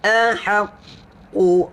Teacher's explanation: Ahaqu, tahan huruf qaf, pangkal lidah, lidah paling dalam.